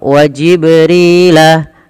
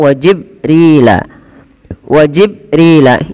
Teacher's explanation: Maka huruf ba wajib dipantulkan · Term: qalqalah